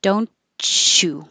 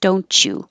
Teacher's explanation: the t and the y next to each other make a cha because don't chew your tongue's up for the t don't you